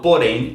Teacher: quando eu falo porém, a sílaba mais forte aí é a última, né? É M, que também estão dentro aí das regras das oxítonas, porque a gente incluiu o EM ou o ENS.